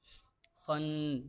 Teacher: خناس، خا حروف مستعلیہ میں سے ہے، خا کو ہم پر کر کر پڑھیں گے یعنی موٹا کر کر پڑھیں گے۔ خن، نون مشدد کا غنہ ہو رہا ہے نون پر، غنے کی مقدار ایک الف کے برابر ہے